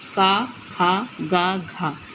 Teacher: कंठ से उच्चारण होने वाले वर्णों का नाम है का, खा, गा, घा। इन चारों वर्णों का उच्चारण कंठ से होता है।